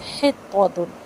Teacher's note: حطۃ ہا باریک زیر ہے، ہا کو باریکی کے ساتھ زیر کے ساتھ ملا کے پڑھیں گے، اور ہا میں وسط الحلق سے ادا کریں گے اور ہوا کے ساتھ ادا کریں گے